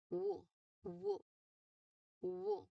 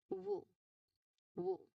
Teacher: The tongue is raised high and towards the back. But most um the most important action here is the lips. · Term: glide